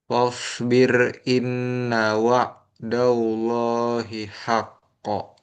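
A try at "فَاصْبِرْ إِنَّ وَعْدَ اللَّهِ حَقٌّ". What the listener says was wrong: Nah, ainnya masih ada seperti hamzah. Wa kurang alir itu ya. Wa coba di sini langsung wa lagi wa.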